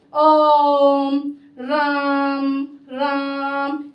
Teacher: इनका उच्चारण करते समय दीर्घ स्वर से भी तीन गुना समय अधिक लग रहा है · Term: विलुप्त स्वर